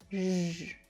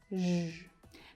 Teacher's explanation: The first sound is the zh sound that you hear in the middle of words like vision or measure.